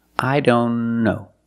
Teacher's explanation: here the t is between consonants so we don't pronounce it